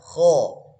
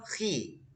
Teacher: Kalau kita kasroh, khi, langsung tipis.